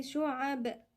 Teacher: ونقف عند الباء بالقلقلة